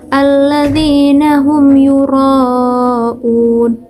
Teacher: huruf ro disini bergetarnya tidak terlalu bergetar